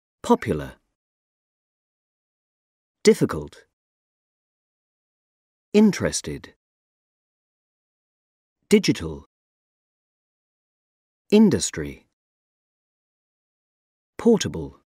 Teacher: The stress on the first syllable.